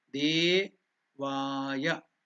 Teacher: De and Va are the Dirgha. We are uttering it with two matras.